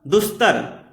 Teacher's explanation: दंत से इसका उच्चारण होता है, तावर्ग का उच्चारण दंत होता है।